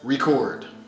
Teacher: if we use it as a verb then the stress would be on the second syllable